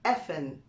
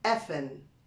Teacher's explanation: if I want to say ing, I just say n